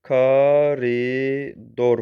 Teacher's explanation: Koridor sözündə o dodaqlanan saitdir.